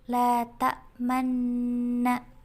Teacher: mencampurkan dhammah pada sukun dengan memoncongkan bibir. Menurut Imam Hafs, di dalam Al-Quran hanya ada satu lafal ishmam, yakni la ta'manna.